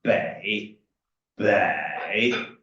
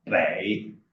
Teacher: You will go a little bit down and up